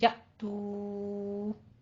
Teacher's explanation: یأتو میں حمزہ پہ جھٹکا دینا ہے، تو پہ آپ نے مد منفصل جائز ہے، 4 کاؤنٹ کرنے ہیں